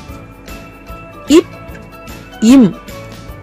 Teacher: ஆகிய 2 மெய்களும் மேல் இதழும் கீழ் இதழும் பொருந்துவதால் பிறக்கின்றன